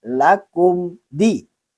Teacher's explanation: Yang pertama, mim mati bertemu dal, hukum membacanya adalah izhar safawi, yaitu dijelaskan bunyi bacaan mim matinya.